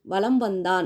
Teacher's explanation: வந்து ஒலிக்குது வளம் வந்தான் அப்படிங்கறதுல மகர எழுத்து அடுத்து வகர எழுத்து வர்றதுனால மகர மெய் தனக்குரிய அரை மாத்திரை அளவிலிருந்து குறைந்து கால் மாத்திரை அளவில் ஒலிக்கிறது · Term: மகர குறுக்கம்